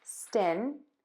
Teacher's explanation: Your tongue is touching the top teeth for that N sound here in stin.